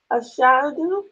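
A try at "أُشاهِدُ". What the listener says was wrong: This is where it's a little bit different because it's a form 3 verb. It's going to be ushahidu. Ushahidu. So it looks the same. You still have that aleph with the hamza, but there'd be a dhamma over it.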